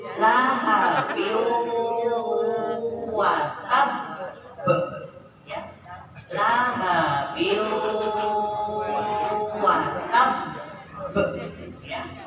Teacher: Jadi bacanya didengungkan, selain diidghamkan juga didengungkan. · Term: Idgham bi gunna